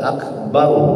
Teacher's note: Ro sebelumnya berbaris di atas tebal. Akbar, nggak boleh baca bar, nggak boleh.